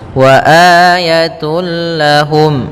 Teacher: masukkan tanwinnya tun langsung ke lam sehingga suara n-nya hilang langsung masuk ke lam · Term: idgham bila ghunah, idgham bila gunnah